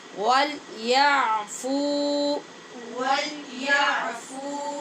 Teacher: یہاں پہ فا کے بعد واو مدہ ہے، اس کی مقدار پوری کریں گے